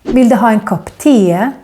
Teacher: E has also a tendency to become long if it is in the end of a word, like in the word te. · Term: long E